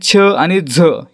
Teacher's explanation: ज्या वर्णांचा उच्चार करताना ह चा उच्चार होतो त्यांना काय म्हणायचं महाप्राण म्हणायचं